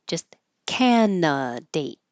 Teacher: We don't say that middle d.